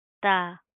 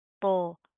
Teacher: تا باریک پڑھیں گے اور تو موٹا پڑا جائے گا